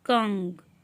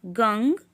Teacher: अनुस्वार का उच्चारण नासिका यानी कि नाक से होता है।